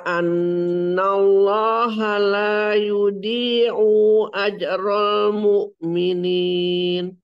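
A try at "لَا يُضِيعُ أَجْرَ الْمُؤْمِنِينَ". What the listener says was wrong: U-nya kebaca panjang. Pendek saja, satu saja.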